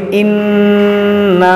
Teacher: غنہ بھی کریں گے اور ایک الف کے برابر کھینچیں گے بھی